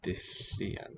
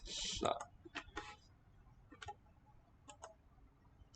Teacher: The double L is voiceless.